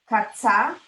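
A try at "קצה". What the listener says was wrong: Good, but now look at the first vowel. Ketsa.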